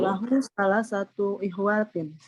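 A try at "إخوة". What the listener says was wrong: Ikhwatin. Nggak panjang, Bu ya. Salah satu ikhwatin. Coba sekali lagi.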